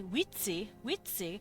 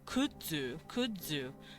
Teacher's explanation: that oo makes it a little harder to say ts, and I say z instead. It's voiced, it's more voice sounding.